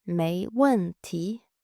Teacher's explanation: But Chinese people often use 没 问 题, which literally means no problem. 没 third tone, 问 fourth tone, 题 second tone. 没 问 题 in the end you're rising up.